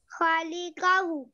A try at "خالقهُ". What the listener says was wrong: خا is long. خالقهُ.